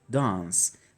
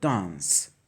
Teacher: dans'ın İngilizcesi a ve e arasında dans hani pek anlaşılmıyor A mı e mi ikisini Tabii ki